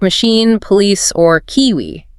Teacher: So for those, you just have to say the I like a long e.